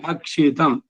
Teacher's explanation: ಅಕ್ಷಿತಂ ಅದು ಕ್ಷ ಮಹಾಪ್ರಾಣ ಇಲ್ಲ ಅಲ್ಪಪ್ರಾಣ